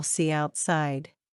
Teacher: word ends with a vowel a e or I end is followed by a word beginning with a vowel sound the words are linked with a yah sound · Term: ya sound